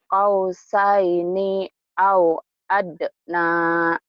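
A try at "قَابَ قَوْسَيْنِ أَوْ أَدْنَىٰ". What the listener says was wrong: Bagus tapi ninya pendek ya. Kau saini au adna. Dihentikan sama saja. Kau saini au adna. Karena ujungnya mad asli. Mad asli matobi'i dihentikan podobai. Sama saja.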